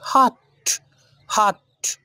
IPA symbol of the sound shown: ʌ